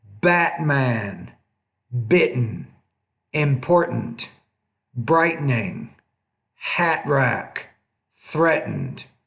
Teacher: Now, what I want you to focus on here, in lesson 15 is the glottal stop. In American English, we don't really pronounce that T in the middle.